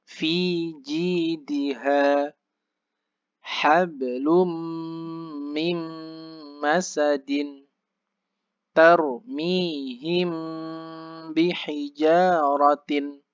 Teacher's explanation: Nah, jadi ibaratnya kalau kita seperti tersenyum i, ya itulah. Ketika mengucap huruf i harus jelas i, jangan sampai e. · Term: kasroh